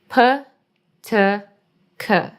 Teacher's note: p is in the front T is somewhere in the middle and C is like all the way back